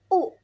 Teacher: Vokal belakang tinggi bulat. U biasanya kalau kita me menyebutkan atau membunyikan huruf U itu bibir kita agak maju ke depan gitu kan.